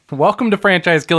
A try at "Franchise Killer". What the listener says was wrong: Franchise Kill? I said killer. It sounded like Franchise Kill. A little more aggressive.